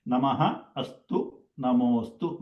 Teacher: When a Visarga preceded by Hraswa A and followed by Hraswa A, all together will be replaced by O. Okay, pronunciation wise it is O only, but while writing it is better to write the Avagraha because of the Akara and pronouns. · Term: Visarga Sandhi